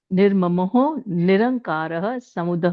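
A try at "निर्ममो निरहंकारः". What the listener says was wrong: नहीं नहीं नहीं निरंकार नहीं, निरअहंकारः. हाँ नहीं, एक सेकंड, आप या तो उसको break. निरअहंकारः, because द र is half, it's निर, ठीक है, एंड देन इट्स अहंकारः, तो ज्वाइन करके हो जाएगा निरहंकारः. निरहंकारः, लाइक दैट.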